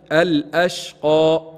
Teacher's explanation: الأشقى تفخيم القاف مستعلية لابد من تفخيمها